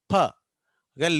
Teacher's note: ప అనేది ఎలా పలుకుతాం? రెండు లిప్స్ని గట్టిగా మూసేస్తాం